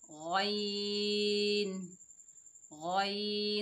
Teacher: गैन हलक के ऊपर वाले हिस्से से अदा होगा जो मुंह की जानिब है।